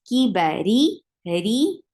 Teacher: The sounds are short. Ri, ra is light here because whenever ra is with kasra, it is light